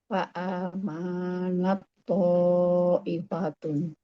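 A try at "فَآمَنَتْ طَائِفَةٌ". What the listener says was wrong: Manya pendek. Karena wakaf berhenti situ. I-nya pendek.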